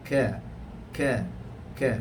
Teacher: Sebab itu kaf ini dia tidak bersifat tebal. Kaf tidak bersifat tebal, tidak seperti mana huruf qaf. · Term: huruf kaf